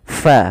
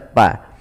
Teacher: fa alirkan nafasnya fa. fa jangan dibaca pa.